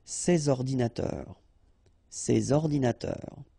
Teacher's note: All right, and of course, les adjectifs démonstratifs, sorry, this or these, okay, and in that case, I took the plural form, so these here, and then ordinateur, computers, so you should make the liaison between S and O